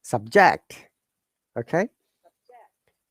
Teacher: for the noun and adjective, the stress should be first part. So it is higher intonation to fall intonation.